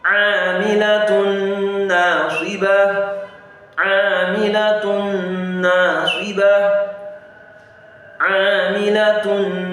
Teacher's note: As if it's only one nun that is there. That nun of the tanwin is inserted into that nun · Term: Idgham Bigunna